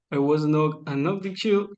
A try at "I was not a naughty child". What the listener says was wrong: Okay, just one little correction of pronunciation. I was not a naughty child, not chill, child, okay?